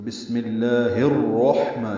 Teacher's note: ہا کو الرحمن کی را سے ملانا ہے، ادغام شمسی ہوگا، جیسے میم کو لفظ اللہ کے نام سے ملایا تھا ملا میں، الف لام شروع والا نہیں پڑا تھا، تشدید والا لام پڑا تھا، یہاں پہ الف لام نہیں پڑھیں گے، را پڑھیں گے۔ · تو بسم اللہ الرحمن، یہ ادغام شمسی ہے، را پر پڑھیں گے، را کو ہا سے ملائیں گے، ہا ساکن پہ ہمس ہوگا